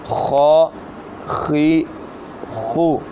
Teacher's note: خا زبر خا، خا زیر خی، خا پیش خو، خا خی خو۔ خا جو ہے یہ حلق کے اوپر والے حصے سے ادا ہوگا